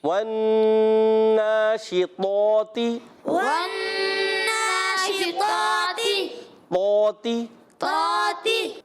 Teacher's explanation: طا کو موٹا رکھنا ہے، پھر یہ تا باریک